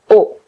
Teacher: le O, mes lèvres sont très en avant. Par contre, la langue, la pointe de la langue recule